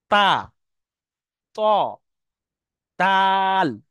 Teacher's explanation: জীভের আগা এবং সামনের উপরের দুই দাঁতের গোড়ার সাথে লাগিয়ে উচ্চারণ হয়। তা জীবের আগাটা সামনের উপরের দাঁতের গোড়ায় লাগছে। দেখেন তা তল জীবের আগা না দাঁতের গোয়ারায় লাগছে।